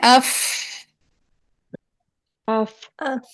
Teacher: ऊपर वाले दांत नीचे वाले होंठ यूज हो रहे हैं। गीले वाले हिस्से से।